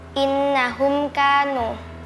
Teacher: Izhar syafawi dalam kata innahum kanu. Mim sukun bertemu dengan huruf kaf dibaca jelas.